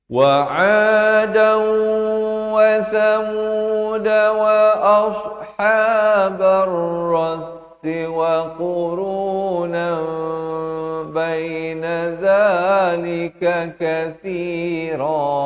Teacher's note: datang ba ditukarkan bunyi nun kepada bunyi mim jadi wa qurunam, tapi jangan lupa dua harakat.